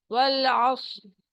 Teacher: صاد بہت موٹا اونچا ہے اور را جب ہم رکیں گے تو پھر یہ موٹا ہو جائے گا.